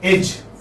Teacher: this is front unrounded vowel between half closed and half open